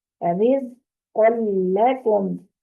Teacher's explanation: قاف کو پر کرنا ہے، لام کو پر نہیں کرنا۔ رزق لکم، اس کو رزق لکم نہیں کرنا، رزق لکم، لام کو باریک رکھنا ہے، ٹھیک ہے، اس چیز کا خیال کرنا ہے۔